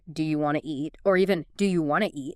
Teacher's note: Sometimes sounds are dropped entirely like the T often disappears in want to